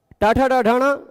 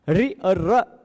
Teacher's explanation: Touch नहीं करती है। ट ठ ड ढण में टच करती है। ऋ र को बोलने में टच नहीं होता।